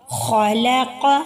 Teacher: قاف کو بھی ہم موٹا کر کے ادا کریں گے کیونکہ یہ بھی حروف مستعلیہ میں سے ہے